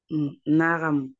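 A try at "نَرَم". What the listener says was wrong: Oui, Naram.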